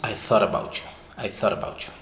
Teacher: cuando tienes una T y esa T está en medio de sonidos vocálicos, obviamente esa T pasa a ser un flap T